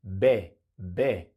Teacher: Al pronunciar la B, usamos las cuerdas vocales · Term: consonante sonora